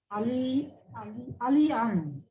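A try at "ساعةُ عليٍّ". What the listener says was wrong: Aliyin. This is kasra. This is mudaf mudaf ilayh. Sa'atu Aliyin.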